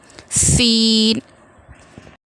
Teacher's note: سین کو جب ہم ادا کریں گے تو تھوڑی سیٹی کی جیسی آواز آئے گی